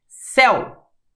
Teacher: o E é infinitamente mais forte do que o U. Então, o E é a vogal, o U é a semivogal. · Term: ditongo